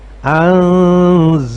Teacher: Jadi bacaan nun pada kata anzaltu itu samar-samar, tidak lagi terdengar suara nun secara jelas. Bunyi nun itu sudah samar-samar karena sudah ada huruf za di depannya, menjadi nah itu. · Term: Ikhfa